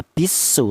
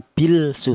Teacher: Jadi lamnya ini langsung masuk ke huruf sin, tidak boleh dibaca bilsu, tidak boleh. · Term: idgham